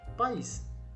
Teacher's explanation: Em país, a vogal A aqui pertence a uma sílaba, tá vendo? P com A. E o I pertence a outra. Então a separação fica assim, país. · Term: hiato